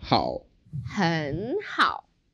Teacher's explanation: when we have two third tones together then we changed the first third tone to a second tone